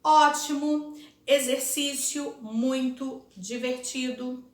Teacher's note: O som do O é mais fraco na última sílaba de cada palavra.